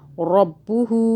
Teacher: ہو کو 3 الف کے برابر کھینچیں